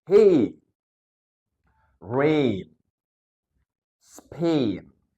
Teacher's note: ya enggak bisa dipisah oke yang pertama ada e dan e suara E dan suara I mereka digabung menjadi satu